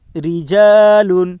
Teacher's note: رجال، را زیر ری، جیم الف زبر جا، رجا، لام 2 پیش لن، رجال۔ را کے نیچے زیر ہے اس لیے را باریک ہوگی، الف سے پہلے زبر ہے اس لیے الف مدہ ہوگا، الف مدہ کو ایک الف کے برابر کھینچ کر پڑھیں۔